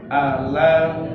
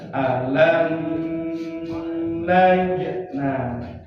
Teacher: Alam jangan alam nah, itu ada dengung, bukan izhar syafawi kalau membunyikannya dengung.